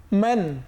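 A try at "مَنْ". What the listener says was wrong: বেশ, মাশাআল্লাহ।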